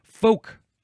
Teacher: Now, I don't say the L, so I am not going to say the L in this episode. But if you really, really like the L, then you can say it that way.